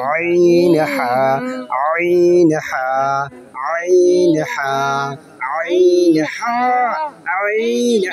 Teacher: হলকের মধ্যখান হইতে আইন